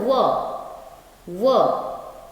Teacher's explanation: अब आता है दांत और ओठ मिला के भी होता है, एक वर्ण है, तो दंत जोड़ ओष्ठ, तो वो होता है व दंत और ओष्ठ दोनों मिलता है इसमें, तो इसको कहा जाता है दंतोष्ठ्य, दंतोष्ठ्य।